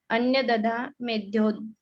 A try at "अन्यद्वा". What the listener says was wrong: अन्यथा नहीं है, अन्यद्वा